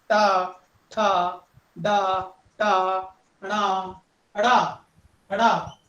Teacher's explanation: ਇਹ ਮੂਰਧਨੀ ਕਿਉਂਕਿ ਜੀਭ ਜਿਹੜੀ ਹੈ ਉਹ ਫਰਰਾਟੇ ਨਾਲ ਟਕਰਾਉਂਦੀ ਹੈ